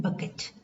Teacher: B as in bucket is a voiced bilabial plosive.